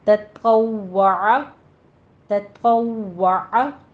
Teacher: वाव कहते वक्त होंठ गोल हो जाएं